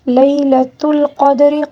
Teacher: لیلۃ القدر، قوف کو بھی پر پڑھیں گے، دال کو قلقلے کے ساتھ پڑھیں گے، را کو باریک پڑھیں گے، ٹھیک ہے، کیونکہ را کے نیچے زیر ہے، ٹھیک ہے۔